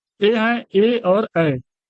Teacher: कंठ और तालु में जीभ के स्पर्श से बोले जाने वाले वर्ण कंठ तालव्य है।